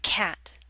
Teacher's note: Your mouth should be more open for the a in cat.